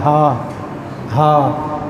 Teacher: حمزہ اور ہا یہ دو حرف حلق کے اینڈ سے آخر سے ادا ہوتے ہیں. حمزہ، ہا، اور ہا حلق کے درمیان سے ادا ہوتا ہے